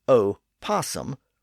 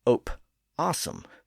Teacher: when pronounced in English, the O was pronounced as a completely separate syllable as opposum rather than opum.